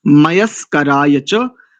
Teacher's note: इसमें दंत्य सकार है, प्रायः करके इसका अशुद्ध उच्चारण होता है।